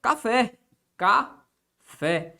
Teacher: A sílaba pronunciada com mais força. Café. Esse fé aqui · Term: sílaba tônica